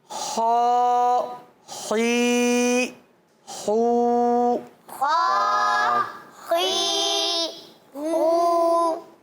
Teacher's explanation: تو حلق کے اوپر والے حصے سے خا ادا ہوتا ہے